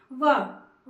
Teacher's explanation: दंतोष्ठ है व, खुद बोलिए व यानी कि दांत का ऊपर का हिस्सा और होठ का नीचे का हिस्सा मिलता है